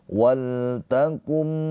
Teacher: Maka itu idgham bighunah. Cara bacanya nun sukunnya dileburkan ke huruf mim ditahan dua harakat.